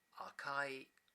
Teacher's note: If the phrase is atonic, as in the case of akai, the initial rise expires after the second syllable